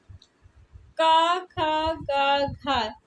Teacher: Option A का खा गा घा, ये का वर्ग के व्यंजन है। का वर्ग के व्यंजन स्पर्श व्यंजन कहलाते हैं और ये कंठ से उच्चारित होते हैं